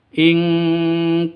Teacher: nun mati bertemu dengan Kaf samar didengungkan siap-siap ke huruf kafnya nonun matinya ditambah dengan ng ing makanya disebut dengan seperti ini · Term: Ikhfa Hakiki